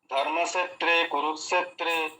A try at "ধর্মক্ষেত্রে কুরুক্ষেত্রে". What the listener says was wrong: আরো আরো আরো ভারী, আরো ভারী করেন। ধর্মাক ক্ষেত্রে, ক্ষেত্রে, ওটা দন্তস্বয়ের উচ্চারণ হয়ে যাচ্ছে, ক্ষেত্রে হয়ে যাচ্ছে, ক্ষেত্রে। ধর্মক্ষেত্রে কুরুক্ষেত্রে, এভাবে বলুন। এই শটাকে আপনি মুখে সেটিং করুন, কিছুক্ষণ পরপর অভ্যাস করুন, হয়ে যাবে।